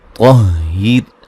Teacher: را کو باریک پڑھیں گے وقفاً وصلاً